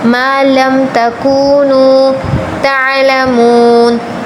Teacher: وَيُعَلِّمُكُم مَّا لَمْ تَكُونُوا، تَکُو کے واو کے پیچھے پیش آیا، حرف مدہ آیا، اس کو تھوڑا سا کھینچ کر پڑھیں گے، مَا لَمْ تَكُونُوا تَعْلَمُونَ، او اور نو دونوں کو تھوڑا سا کھینچ کر پڑھنا ہے